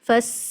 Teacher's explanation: सीन में सीटी की आवाज